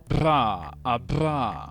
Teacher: It has a bilabial flap. Imagine vibrating your lips together like a raspberry sound, but as a distinct, controlled consonant.